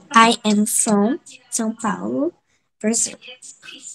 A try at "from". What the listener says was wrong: Ó, o from, a gente tem que fechar a boca no final, né? Como se nós fôssemos falar a palavra Maria. from.